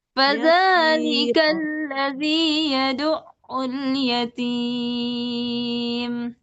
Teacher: Yatimnya agak turun datar gitu. Jadi jangan diangkat.